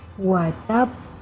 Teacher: Berhenti seketika baru keluarkan bunyi qalqalahnya.